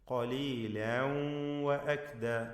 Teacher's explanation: തൻവീനിനെ ശേഷമുള്ള വാവിൽ ഭാഗികമായി ലയിപ്പിച്ച് മണിക്കണം. ഇദ്ഗാം ബിഗുന്നഹ് നാഖിസ്.